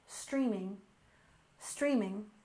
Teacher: streaming services with stress on the first syllable